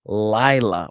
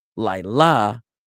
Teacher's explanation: this word has the accent on the first syllable. So the word is lila with the emphasis on lie rather than lila with the emphasis on la.